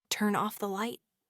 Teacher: When speaking quickly, we don't pronounce turn off with a break. The N sound from turn beautifully connects to the O sound from off, resulting in a pronunciation closer to turn off.